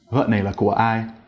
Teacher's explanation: You'll notice that the pitch didn't rise at the end at all. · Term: dấu hỏi